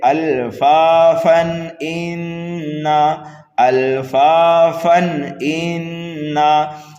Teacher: تنوین کے بعد میں حمزہ آ رہا ہے حروف حلقی میں سے، تو یہاں پر ہم کریں گے اظہار